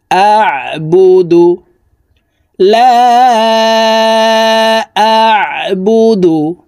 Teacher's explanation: তিন আলিফ টানে পড়বো লাম আলিফ জবর লা হামজাহ আইন জবর আইন হরফকে হালকের মধ্যখান থেকে চাপ দিয়ে উচ্চারণ করতে হবে কারণ আইনের মাখরাজ হালকের মধ্যখান থেকে হবে